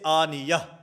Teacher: اور وقف بالابدال کی دوسری صورت، کلمہ کے آخر میں گول تا ہو جس کو تائے مدورہ کہا جاتا ہے، تو وقف کی حالت میں یہ تائے مدورہ اور گول تا ہا سے بدل جاتی ہے